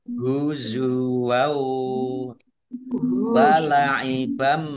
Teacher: Fathah tanwin bertemu dengan huruf wawu, bacaan idgham bi gunnah, masuk dengan mendengung, yaitu mendengung wawu. Ditandai wawunya ada tasdidnya, ditahan biar tampak mendengungnya.